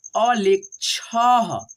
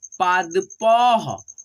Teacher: दो विसर्ग को ह के रूप में उच्चारण करेंगे